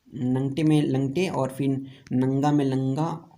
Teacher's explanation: ल जो है कभी न के बदले ही प्रयुक्त हो जाता है